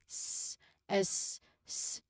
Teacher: So the S or the hissing sound here is invoiced of course because when we try to say this sound and touch your neck s there's no vibrations at all. Meaning that again this is unvoiced or we call it also as voiceless sound.